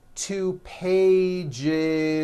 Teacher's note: one page becomes two pages with that voiced z